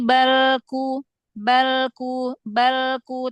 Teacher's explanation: Lam sukun ditahan jangan buru-buru.